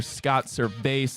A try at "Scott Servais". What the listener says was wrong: Scott Servais. No, it's Scott Service. No, you said Servais. It's just Scott Service, yeah. Scott Service. It looks like it wouldn't be like the Service. Not like Ricky Gervais. It's Scott Service.